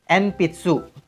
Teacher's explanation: jika huruf N ketemu b p atau m dia akan berubah menjadi mm